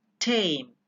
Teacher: the active articulator is the tip or blade of the tongue